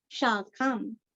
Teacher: खा पूरा पढ़ के अनुस्वार का उच्चारण आधा म